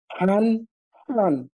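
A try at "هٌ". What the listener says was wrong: হান, হা। ১ম টা হলো হা।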